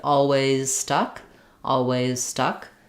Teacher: the Z can be there or it can be dropped and it can go right to the S